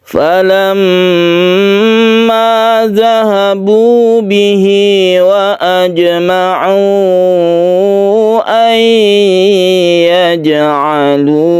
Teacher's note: Kita dengungkan di mem yang bertasydid ini disebut gunnah atau lengkapnya gunnah musyaddada.